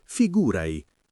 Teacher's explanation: nella parlata veloce spesso si sente figurai con la te che si assorbe un po', ma l'importante è mantenere quel senso di immediatezza.